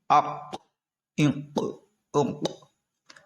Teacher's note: ان میں جو قاف تھا اس میں قلقلہ خوب ظاہر کیا تھا کیونکہ ساکن ہے نا، اس لیے قلقلہ ظاہر ہو رہا ہے۔ حمزہ ہا زیر